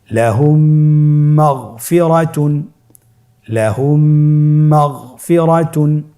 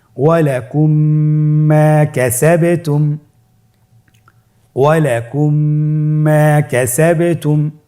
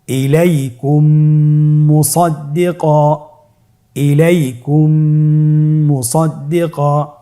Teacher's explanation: মিম সাকিনের পরে যে মিমটি আসবে মিম সাকিনকে পরবর্তী মিমের সাথে মিলিয়ে পড়তে হবে গুণনার সহিত